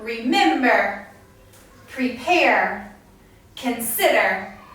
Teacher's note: the stress is put on the second syllable